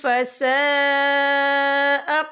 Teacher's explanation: یہ مد جو ہے مد متصل ہے، اس کی مقدار 4 حرکت کے برابر ہے، تو ہم اسے 4 حرکت کے برابر کھینچ کے پڑھیں گے۔